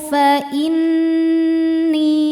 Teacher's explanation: qul tarabbasu fainni nun tasdidnya dihukumi ghunah musyaddadah karena nun bertasydid cara bacanya berdengung tahan dengungannya kurang lebih dua harakat